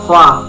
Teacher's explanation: Makhorijul huruf fa terletak pada perut bibir bawah dan ujung dua gigi seri bagian atas. Sedangkan sifatul huruf fa terdiri dari lima sifat, yaitu hames, nafas berhembus.